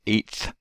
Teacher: you generally have the T articulation be more forward behind the teeth.